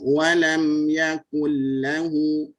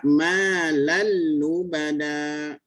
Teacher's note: nun hilang, habis ya, masuk itu sempurna ya, makhraj dengan sifatnya hilang